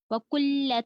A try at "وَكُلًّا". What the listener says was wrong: اس میں ہے وَكُلًّا ہے یہ، ٹھیک ہے، لام کے اوپر تنوین ہے.